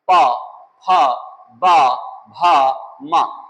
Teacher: और पा वर्ग में जब आते हैं तो हम देखते हैं हमारे होंठ पा, फा, बा, भा, मा, होंठ स्पर्श।